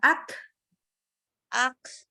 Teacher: Jadi untuk huruf kaf sukun aktsarakum, lepas udaranya